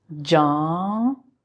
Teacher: I mean halfway. So start pronouncing N, but don't finish it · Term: nun gunna